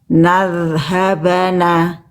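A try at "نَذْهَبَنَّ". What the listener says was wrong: Ya, nunnya tasdid Bunda. Nadhaban. Nadhabanna.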